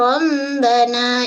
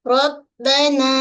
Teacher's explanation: pada huruf ba jangan mengalir suara, jangan baca dengan rabbana.